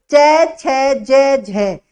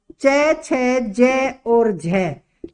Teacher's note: च, छ, ज और झ, ये चारों है ये स्पर्श संघर्षी है, ये है संघर्षी।